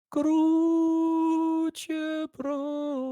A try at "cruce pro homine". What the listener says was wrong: There you go. You just got a little high at the end, but you got it. It was the homine got a little high.